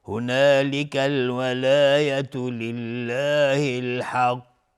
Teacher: اگر ما روی الحق توقف بکنیم قاف قلقله میخواد و قاف از حروف استعلا است